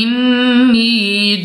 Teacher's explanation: नून मुशद्दद में हमेशा गुन्ना होता है।